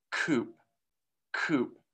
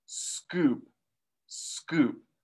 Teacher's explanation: notice how the s then blocks and we do not get that aspiration